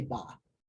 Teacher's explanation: rather than saying ba, ha, they just combine it and say ba. Makes it easier.